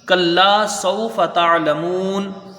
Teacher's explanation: کلا ایک الف کی یہاں مقدار رہے گی، کاف کو جلدی پڑھا جائے گا، الف مدہ ہے۔